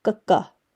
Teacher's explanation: It's like a K sound, but a hard K sound, which is in between a K and a G.